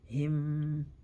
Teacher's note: So ba is from the lips, so the lips are absorihim. And we have mim sukun. We hold it for 1 second.